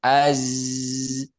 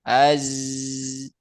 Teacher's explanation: Huruf zai itu kan enggak ada hamesnya tapi suaranya mengalir. Az. Makanya saya sering menekankan untuk huruf zai itu harus mengalir suaranya.